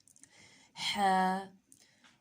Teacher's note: ہا کا مخرج ہے وسط حلق سے حلق کا درمیان۔